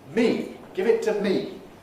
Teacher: when we say this word in isolation or when we accent it me give it to me then it's the long vowel